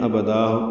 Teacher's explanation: ابدن میں ابدا مد عوض بن جائے گی